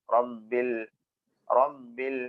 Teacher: റബ്ബിൽ എന്ന സുക്കൂനുള്ള ലാമിനെ നമ്മൾ അറിയാതെ മിസ്സായി പോകും അവിടെ ഇൽ എന്ന് വരണം റബ്ബിൽ റബ്ബിൽ ഇൽ എന്നതിനു ശേഷമാണ് ഐന് പറയേണ്ടത്